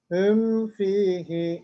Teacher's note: Mimi tutmayacağız sekte yapmayacağız nun gibi nunun izharı gibi mimin beyniyye sıfatını vererek karıştırmadan idgam etmeden okuyacağız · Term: mimin izharı